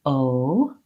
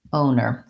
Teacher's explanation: but this time the letter o does say an o and american o is a diphthong we glide from an o to an uh